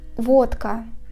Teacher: For example, a word водка. We write Д, but we pronounce it as Т, because after comes a voiceless consonant К.